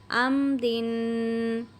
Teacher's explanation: را کے نیچے زیر ہے تو اس لیے ہم نے اس کو باریک پڑھنا ہے